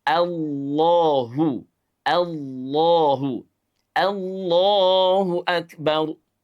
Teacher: Lafaz Allah dibaca dengan suara menebal. Hanya jika huruf sebelumnya berharakat fathah atau berharakat domah, baik fathah maupun domah bertemu dengan lafaz Allah, maka menyebabkan lafaz Allah dibaca menebal.